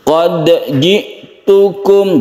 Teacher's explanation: jadi tetap qolqalah Jangan DI idgamkan atau dimasukkan ke huruf Jim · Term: Qalqalah sugro